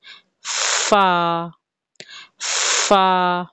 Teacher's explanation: ऊपर वाले दो या चार दांत नीचे वाले होंठ के अंदर यानी कि इनके शिकम में होठ के गिले हिस्से में लगेंगे तो फा अदा होगा कैसे फा फा मुंह से थोड़ा सा · फा फा मुंह से थोड़ा सा सांस थोड़ी सी ब्रेथ निकलेगी फा की अदायगी के वक्त जब दांत नीचे वाले होठ में